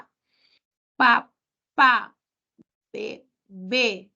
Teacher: la obstrucción de la salida del aire se da cuando se juntan los labios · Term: bilabiales